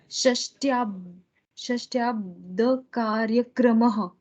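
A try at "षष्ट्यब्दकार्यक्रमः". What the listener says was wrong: Shashtyabda. You did a dirgha drag, which is non-existent. See, the a is hrisva. There is no bar. So shashtyabda.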